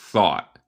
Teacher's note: Y es mi acento estadounidense porque yo no digo el T final y yo hago un glottal stop, so yo digo thought.